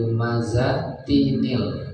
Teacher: Jadi ada ada nun bayangannya karena enggak ada nunnya gitu. Jadi seolah-olah jadi ada bunyi nun gitu untuk menggantikan bunyi tanwin · karena lumazah itu tanwin belakangnya tin, maka berhadapan dengan alif lam itu harus dibunyikan nunnya